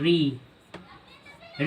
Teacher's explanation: री और दीर्घ री का उच्चारण स्थान मूर्धा